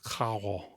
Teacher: More like a French R rather than a traditional Spanish trilled R.